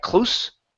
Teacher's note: that is the unvoiced S sound